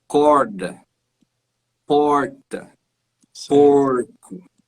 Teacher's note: esse r retroflexo ele vai sempre acontecer depois da vogal tá ele tá no final da sílaba e sempre no final